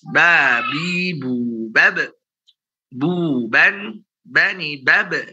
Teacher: Jangan ada nafas yang keluar karena ba punya sifat jahar.